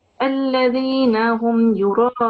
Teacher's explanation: Make sure that you pronounce this ta with a fuller mouth, with a round mouth. And then this mad kabira you have to pronounce more than 5 seconds, 5 to 6 seconds. It was prolonged, I think, for only 3 seconds when you were reciting.